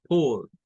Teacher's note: Suena esa A que suena como una O. Comenzamos con A, terminamos sacando una O porque está a la par de una L.